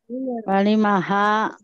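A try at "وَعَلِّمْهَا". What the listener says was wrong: Fi'il amr itu harus sukun huruf terakhirnya. Wa'alimha.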